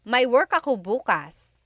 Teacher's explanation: If you say bukas, emphasis is on the first syllable. That means tomorrow.